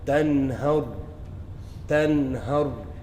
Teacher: So the nun comes from where? The tip of your tongue. · The nun sakina or tanween is pronounced short, sharp, and clear, and without ghunna, without the excessive nasaling sound. So you wouldn't read it as tanhar. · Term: izhar